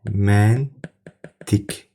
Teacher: Sonu Q hərfi ilə bitən bir qrup alınma sözlərdə demək olar ki, əksəriyyətində q hərfi ilə yazılır, amma k hərfi ilə tələffüz olunur.